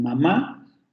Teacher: Si la vocal aparece ante una nasal, como en mamá, se va a nasalizar.